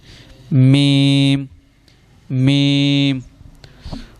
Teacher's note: میم، دونوں ہونٹوں کے خشک حصے سے